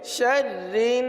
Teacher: रा को पुर नहीं पढ़ेंगे, रा को बारीक पढ़ेंगे